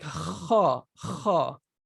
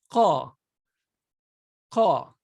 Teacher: Kha is a letter that is not pronounced using the tongue, whereas qa is. Qa is pronounced very, very close to kha, but kha is just air coming and hitting the upper, this area, just air coming and hitting that.